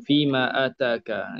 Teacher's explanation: itu mak munfasil 2 harakat